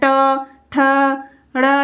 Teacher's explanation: ट वर्ग के जितने भी आते हैं वर्ण वह मूर्धन्य के अंतर्गत आते हैं